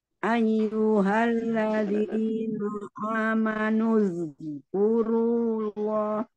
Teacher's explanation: amanuz itu ditahan aja jangan dipantulkan